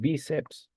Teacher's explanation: la mayor fuerza de voz está en la penúltima sílaba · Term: palabra grave